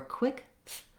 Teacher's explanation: I have to really have that tongue just barely forward, just barely there for that TH sound so that it's ready for the R.